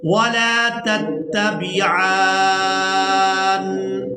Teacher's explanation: ہم نے عین کو کھڑی زبر اور مد کی وجہ سے کھینچتے ہوئے نون کے ساتھ ملانا ہے اور جب نون کو ادا کریں گے تو یہاں پر ہم نے غنہ کے ساتھ ادا کرنا ہے.